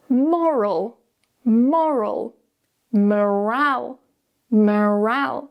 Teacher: because we're moving the stress, the vowels are going to change just a little bit. With the first word, we start with o, more, and then we go into a schwa and very relaxed.